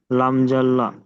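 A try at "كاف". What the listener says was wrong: লাম নয়, কাপ, কাপ জবর কা,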